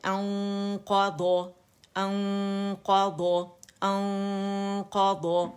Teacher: اور یہ 2 کاؤنٹس کا ہمارے پاس اخفا ہوگا کاملہ گریڈ کا